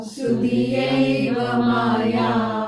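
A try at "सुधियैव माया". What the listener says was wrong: Yeah, the North Indians say ye. No, yai. Sudhiyaiva Maya.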